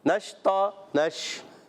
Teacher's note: شین میں منہ میں آواز پھیلے گی، تفشی ادا ہوگی، وسط زبان وسط تالو سے